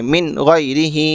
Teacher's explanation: اسی طرح من غیرہ، نون ساکن ہم کو دکھا، نون ساکن کے بعد والا حرف کن میں سے غین ہے، اور غین ان 6 حرفوں میں سے ہے، تو اس لیے اظہار ہوگا، نون کی آواز کو ظاہر کر کے جلد پڑھیں گے